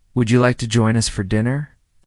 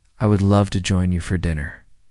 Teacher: First, the question with a rising tone, would you like to join us for dinner? And now the answer with a falling tone, I would love to join you for dinner.